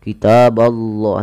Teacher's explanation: huruf 'b' tipis, huruf 'allah' tebal